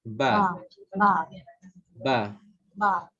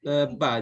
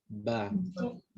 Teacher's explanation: Dan cara untuk sebut huruf ba ini, puan perlu memberi apa panggil, merapatkan bibir atas dan bibir bawah, dan memberi getaran